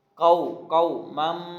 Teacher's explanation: قو مم، میم کے بعد میم آ گیا، یہاں پہ ادغام ہو رہا ہے، تنوین کی بجائے ادغام، یعنی ایک میم کی آواز دوسری میم میں مدغم ہو رہی ہے